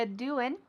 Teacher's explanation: we're dropping that g again